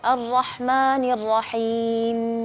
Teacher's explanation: agak sedikit panjang ketika melafalkan huruf mim khususnya mim yang sukun